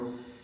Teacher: റാഇനെ തടിപ്പിച്ച് തഫ്ഖീം ചെയ്ത് ഉച്ചരിക്കണം.